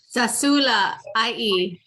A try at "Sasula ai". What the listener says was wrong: Sasula ai. So I kind of hearing you put actually you're putting a glottal stop like over there. Sasula ai. Ai.